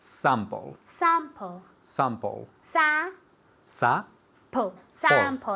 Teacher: it's more like ah it's more nasal